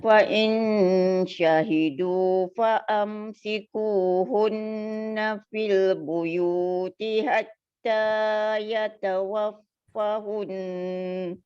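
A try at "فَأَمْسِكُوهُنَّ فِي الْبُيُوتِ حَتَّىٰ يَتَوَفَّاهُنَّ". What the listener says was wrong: Fa tu panjang. Yatawaffahunnal maut.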